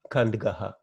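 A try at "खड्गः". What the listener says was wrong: Kadgaha, not Kand. Where is the nasal sound? There is no nasal at all. Kadgaha. It is Kadgaha. The nasal will have a dot. The nasal letter will have a dot to the right of it. There is no dot here. So it is Kadgaha.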